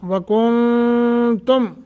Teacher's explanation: नून साकिन के बाद ता गुन्ना करेंगे यानी इख्फा